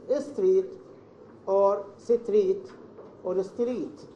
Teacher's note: inserting the vowel after each consonant of English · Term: interlingual error